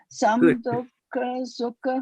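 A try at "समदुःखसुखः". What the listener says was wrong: No. Hold on. Not some. Why is it some? Why is it some dukha? Samadukha sukha. Yeah, sukha. Yes, it requires moving of the mouth muscles and I dukha.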